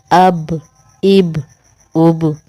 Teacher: با پہ قلقلہ ہو رہا ہے، قلقلے میں آواز دیکھیں ہماری کیسے جاری ہے